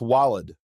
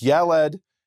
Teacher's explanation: same three consonants except for the first consonant in Arabic becomes a w and in Hebrew it's a y